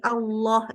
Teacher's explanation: atau istilahnya membulatkan bibir ingat sekali lagi Allah itu Allah itu namanya tebal pangkal lidahnya dinaikkan